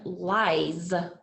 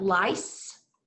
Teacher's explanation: lies had that buzzy feeling. And lice had the S feeling.